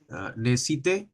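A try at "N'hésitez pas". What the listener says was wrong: নে, single S মাঝে আছে, তাহলে জ্বর মতো শোনা হবে, তাই না? নেজিতে, হ্যাঁ, নেজিতে।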